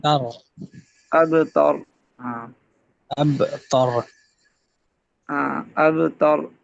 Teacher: تا باریک ہے، را پر پڑھیں